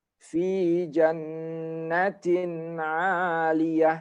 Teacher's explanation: Tinnya itu nampak jelas juga ada nunnya, ya. Tanwinnya dibaca jelas.